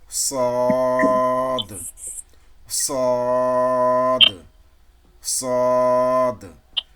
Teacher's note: ওই জায়গা থেকে সিন আর জা উচ্চারিত হয়, কিন্তু ওই সদের বেলায় দেখবেন এই যে জিহ্বার মাঝখানটা, এই মাঝখানটা একটু ডাউন, এই যে দেখেন মাঝখানটা ডাউন, আর দুই সাইড, দুই কিনারটা একটু ওপরের তালুর দিকে উঠে যাবে। এই দুই কিনারাটা ওপরের তালুর দিকে উঠে যাবে, তাহলে সদ এই লেটার উচ্চারণটা ঠিক মতো হবে।